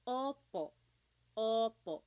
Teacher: Sometimes I think of it like having a ball in your mouth. Your tongue gets kind of pushed back and down a little bit and the inside of your mouth is open and wide.